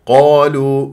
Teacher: القاف كما ذكرت لحضراتكم مفخمه مرتبه اولى مفتوحه بعدها الف الالف بعدها تفخم تبعا للقا الالف ساكنه قبلها قاف مفتوح مطبعي